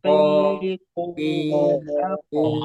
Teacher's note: Terus nggak boleh ada udara. Ko itu nanti kaf. Ko. oh Ko. Jangan ada udara. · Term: kof